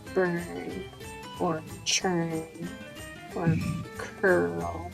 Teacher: So the vowel is pretty much silent. You just hear the R. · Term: UR grapheme